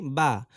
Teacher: হচ্ছে দুই ঠোঁট গোল করে সামান্য খোলা রেখে উচ্চারিত হয় ওয়াও দুই ঠোঁটের ভেজা জায়গা হইতে উচ্চারিত হয়